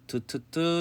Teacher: 윗 잇몸과 혀 끝에서 나는 것, 보통 치조음이라고 하죠. 치경음. 그래서 트트트 스스스스스드르 이런 것을 치조음이라고.